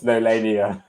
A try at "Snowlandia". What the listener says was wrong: And this one's with a D. Snowlandia.